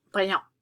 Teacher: Notice that T isn't pronounced, the N makes the A nasal, brillant. Okay, but when I have an E on the end, all of a sudden, I have brillante.